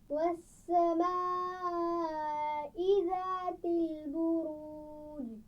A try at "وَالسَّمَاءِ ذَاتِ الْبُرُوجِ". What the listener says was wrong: والسماء ایک بڑی مد ہے، تھوڑا سا زیادہ کھینچ کر پڑھیے اس کو.